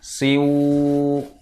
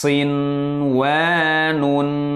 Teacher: Nah, jangan didengungkan. Nun sukun jangan dimasukkan kepada wawu. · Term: idhar wajib